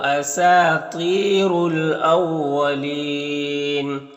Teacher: الف لام حروف قمری حمزہ کے شروع میں ہے تو لام کو پڑھیں گے، الف کو نہیں پڑھیں گے۔ یہاں پر وقف کی صورت میں مد عارض وقفی ہوگا، تو اس طرح سے پڑھیں گے۔